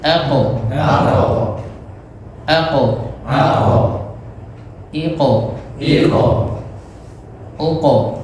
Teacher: pangkal lidah nyentuh langit sebelah atas yang bagian lunaknya ya